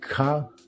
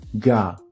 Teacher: So, unvoiced K sounds become voiced G sounds. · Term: dakuon